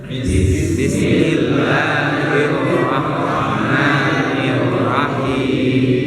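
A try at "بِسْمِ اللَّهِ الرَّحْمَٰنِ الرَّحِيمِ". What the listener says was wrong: Jadi gini ketekannya. Jadi jangan terlalu panjang. Karena untuk itu ada khususnya ya, ada ada kasusnya dulu, ada sebabnya, baru bacanya kayak tadi.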